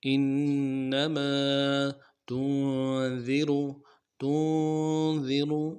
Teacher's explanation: نون ساکن ہے، غنہ کریں گے، ذال کو باریک کریں گے، غا کو موٹا کریں گے۔